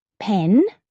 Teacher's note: Hold your hand in front of your mouth and say pen. You should feel a puff of air.